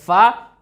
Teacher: फ़ा का मखरज है नीचे के होंठ की तरी और सनाया उलिया का किनारा। ये सनाया उलिया है और ये इसका किनारा है दोस्तों, आप देख पा रहे होंगे ये किनारा है। · यानी कि इसको आप जब अपने सनाया उलिया ऊपर वाले दोनों दांतों से नीचे वाले होंठ को दबा करके बोलेंगे फ़ा, तो आप बहुस्न खूबी फ़ा की अदायगी कर लेंगे।